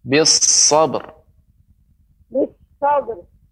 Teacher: Sadnya lebih ditambah lagi Ibu, desisnya bis sabr.